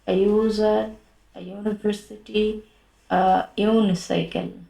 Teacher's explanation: প্রথম অক্ষরটা ইউ থাকলেও ইউ উচ্চারণটা কি হচ্ছে? কনসোনেন্ট ওয়াই এর মতো হচ্ছে, তাই না?